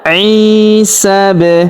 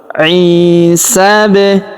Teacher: Huruf sa langsung sambung ke huruf ba yang berharakat sukun ya. Lalu kita pantulkan atau kita qalqalahkan.